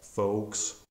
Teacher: a mute L sound where L is not pronounced